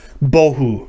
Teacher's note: it's multi-syllabic it's not monosyllabic but the first syllable is accented